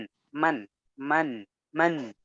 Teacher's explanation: bukan hanya sekedar membunyikan N, tapi alirkan suara ke rongga hidung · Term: gunnah